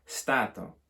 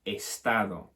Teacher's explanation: They actually have taken it, but they've added a reinforcing syllable, an E at the start, and it's become estado.